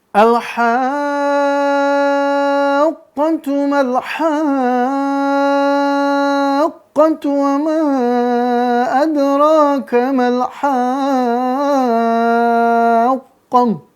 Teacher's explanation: maka di situ qafnya semuanya dibaca masuk ke sifatnya, sifat isti'lanya. Dia pelafalan tebal habis al-haqqah ya.